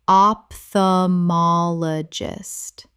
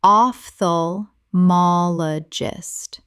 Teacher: Correct pronunciation, ophthalmologist. The O P H makes an F sound. Five syllables.